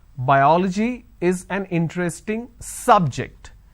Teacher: I am stressing on the first syllable